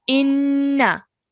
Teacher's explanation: Nun Mushaddad requires 2 seconds gunna sound